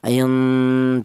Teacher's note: cara bacanya nun mati ini disamarkan atau dibaca ikhfa